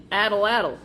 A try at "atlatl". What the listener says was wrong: you're saying addle. There's an owl. You put the emphasis on the wrong syllable. ATLATL.